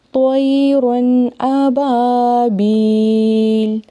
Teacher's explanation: یہاں پہ تو اور را دونوں کو موٹا پڑھنا ہے